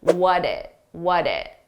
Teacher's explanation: we have a t between two vowels which we pronounce as a soft D sound